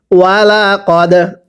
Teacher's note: এরপরে ওয়াও জবর ওয়া, লাম জবর লা, ওয়ালা, কফ দাল জবর কদ, দালে সাকিন কলকলা করে পড়তে হবে।